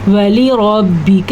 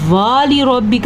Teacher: را پر پڑی جائے گی، کاف کو لمبا نہیں کرنا، واو کو لمبا نہیں کرنا